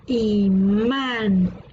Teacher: la sílaba tónica está en la última por lo tanto es una palabra aguda